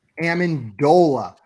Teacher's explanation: Amendola, with the emphasis on the dole, baby. Everything else is not going to be emphasized in that name, and it does not start with an A.